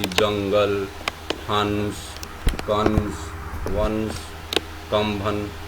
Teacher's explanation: अ के ऊपर जो बिंदी आती है उसे अनुस्वार कहते हैं। अनुस्वार का उच्चारण स्थान नाक से होता है। अर्थात इसे बोलते समय अपन नाक से ध्वनि निकलती है